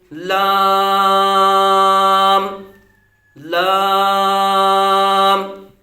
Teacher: لام زبان کا کنارہ اور ضاحک سے ثنایا تک کے مصوروں سے ادا ہوتا ہے۔ زبان کا یہ سمجھیے کہ یہ زبان تو اس کا یہ کنارہ ہے، اب اس کنارے کے اوپر جو ثنایا، یہ سامنے والے جو دانت ہیں، ان دانتوں سے یہ داروں تک، اس طرف یا اس طرف، ان داروں تک یہاں سے جو مصورے ہیں وہاں سے ادا ہوتا ہے۔ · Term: حروف طرفیہ